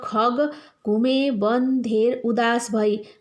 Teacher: कण्ठ स्थानीय ख, ग, घ यी वर्णहरूको आवृत्ति भएको छ, अथवा यी वर्णहरू चाहिँ घरिघरि दोहोरिएका छन्।